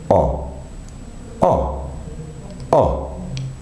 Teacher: If I work along the back, I'm working in an open position, and my lips are going to round slightly.